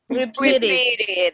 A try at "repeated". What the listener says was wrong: Repeated. Very good.